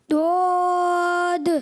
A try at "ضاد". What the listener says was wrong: آپ نے پڑھا دعاد. دعاد نہیں پڑھا. ضاد ضاد لام. اچھا جب آپ کا زبان کا بغلی کنارہ اوپر صحیح داڑھوں کی جڑوں میں لگے گا نا تو یہ حرف صحیح ادا ہوگا. ضاد.